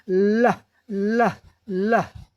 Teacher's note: जीभ के दोनों किनारों से हवा बाहर निकल जाती है, और हमारे गले में कंपन भी होता है। टंग touch his roof of mouth, हमारी जीभ रूफ ऑफ माउथ का मतलब कठोर तालू को, जो दांत के सैकिट हैं उसके पीछे छूती है।